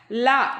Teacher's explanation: லா, இந்த சின்ன லா இருக்குல்ல, நாவின் 2 பக்கங்கள் தடித்து மேல் பற்களின் அடிப்பகுதியை தொடுவதால் லகரம் தோன்றும்